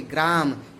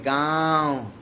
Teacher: ग्रा निरनुनासिक ध्वनि है ग्रा, लेकिन तद्भव में गांव, अनुनासिक ध्वनि लग गई।